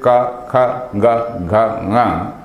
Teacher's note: The rear portion of the tongue is coming into contact with the rear portion of this palate, and then it is producing all those sounds.